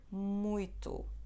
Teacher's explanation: so it's always bilabial at the beginning · letter M makes sound M, which is bilabial, and it also makes just a nasal sound like mm.